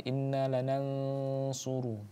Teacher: ada nun bertemu dengan huruf shad, itu hukumnya adalah ikhfa, maka jangan lupa untuk didengungkan ya